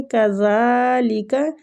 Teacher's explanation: زال کو کھینچیں گے، کھڑی زبر ہے